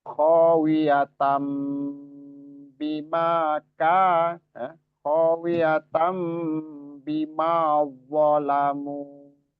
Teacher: Khawiyatam ditahan ya, dan huruf nunnya, tanwinnya itu berubah menjadi mim. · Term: iqlab